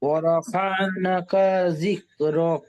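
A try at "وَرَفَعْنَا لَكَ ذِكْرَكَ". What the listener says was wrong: ওয়ারাফা'না, নাটা টান দেন, ওয়ারাফা'না লাকা যিকরাক।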